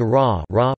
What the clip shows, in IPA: ˈraː